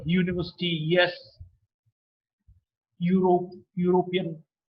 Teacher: There's a lot of friction. It's a palatal sound. See, for the first time, the blade of the tongue touches the hard palate.